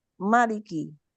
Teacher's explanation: Ya, jadi adapun imam lain tidak memakai alif atau hazful alif, membuang alif setelah huruf mim, sehingga dibaca maliki, pendek tanpa mat ya